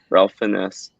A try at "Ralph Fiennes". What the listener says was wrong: So it looks like it says Ralph Fiennes. It's actually Ray Fiennes. Yeah, I thought that was a nickname, but apparently they pronounce it it's Ralph, but it's pronounced Ray.